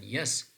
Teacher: Approximant means that the tongue is not absolutely touching the hard palate, but they are approximating each other. They are very close to each other, but still there is sufficient, for example, passage between the two, right? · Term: palatal sound